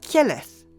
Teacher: Conversely, let's say the southern dialect made a different innovation where the initial k becomes a ky sound, as if there is a little y after the k